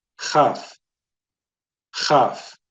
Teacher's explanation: When it has no dagesh, as in this one here, that's pronounced with that hard sound from the back of the throat, guttural sound